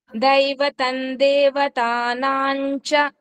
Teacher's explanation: 16వ శ్లోకంలో 2వ లైను, దైవతం దేవతానాంచ. ఇక్కడ దేవతానాంచ చా ముందు అనుస్వరం వచ్చింది, దాన్ని ఇని కింద పలకాలి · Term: ఇని సౌండ్